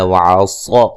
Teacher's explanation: صاد کو موٹا ادا کریں گے